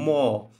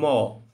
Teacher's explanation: এটা ম কোন মানে কোথায় উচ্চারণ হয় দেখেন, এটা হলো ওষ্ঠে উচ্চারণ হয়, মানে ঠোঁট দিয়ে ম। ম দেখেন দুই ঠোঁট একসাথে হয়ে তারপর ছাড়তে হয় ম। এগুলো হচ্ছে ওষ্ঠধ্বনি।